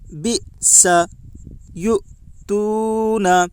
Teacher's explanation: یا کے اوپر پیش ہے، پیش کو جلدی پڑھیں، تھوڑا بھی نہ کھینچیں۔ معروف پڑھیں، مجہول آواز سے بچیں۔